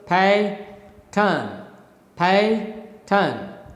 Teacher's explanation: the first syllable is stressed and the second syllable is unstressed such rhythm is actually known as the falling rhythm from up you go down first there is stronger syllable next there is a weaker syllable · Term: troche